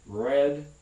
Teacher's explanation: sometimes it's retroflex as in red very hard to hear the difference